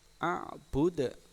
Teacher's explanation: bacaan dal memantul, itu dinamai hukum bacaan qalqalah